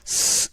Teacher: 이 사이로 발음이 새 나간다는 걸 확인할 수 있습니다